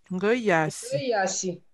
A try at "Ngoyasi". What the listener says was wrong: Très bien.